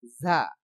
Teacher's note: যা উচ্চারণ এক আলিফ পরিমাণ লম্বা করতে হবে